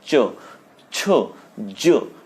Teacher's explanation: च छ ज जब बोलते हैं हम तो वो जीभा टच हो रही है तालु को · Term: तालव्य